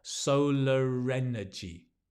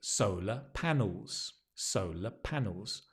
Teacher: only when there's a vowel in the next word you will pronounce that R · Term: linked